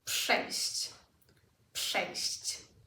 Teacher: P is unvoiced, RZ becomes unvoiced as well.